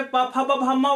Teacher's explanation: प फ ब भ वाली जो पूरी सीरीज है वो ओष्ठ वाली पूरी सीरीज हो जाएगी